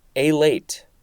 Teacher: The emphasis is slightly more on the first syllable.